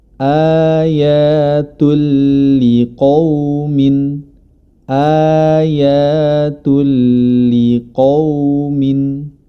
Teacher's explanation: huruf ta berharokat dhammatani bertemu dengan huruf lam, maka ini adalah idgham bila gunnah